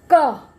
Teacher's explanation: जब हम टच करके क गले के अंदर से आवाज निकालेंगे तब क निकलेगा, नहीं तो क उसमें चिपक के रहेगी जीभ, तो बाहर तो आ ही नहीं रही, है ना।